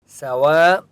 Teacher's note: سواء السبیل، سوا، واو الف مد زبر، و اوپر بڑی مد ہے اس لیے واو کو 4 سے 5 الف کی مقدار کھینچ کر پڑھیں گے